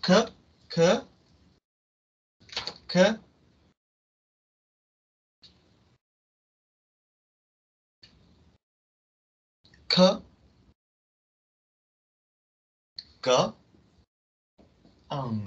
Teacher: 혀랑 hard palate. 다음에 velar 사운드는 또 혀랑 이때는 velum. 그래서 혀랑 velum 사운드 이 두 개가 연결이 돼서 나는 소리입니다.